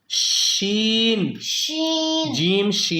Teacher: زبان کے درمیان اور تالو کے درمیان سے ادا ہوتے ہیں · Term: حروف شاجریہ